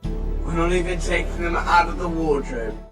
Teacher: We don't fully pronounce the G in the taking, and the word them loses the th sound and morphs with taking, resulting in taking them.